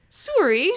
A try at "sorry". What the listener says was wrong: Now you sound like you're saying Surrey. Like where Harry Potter's from.